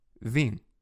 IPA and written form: vĩ (vim)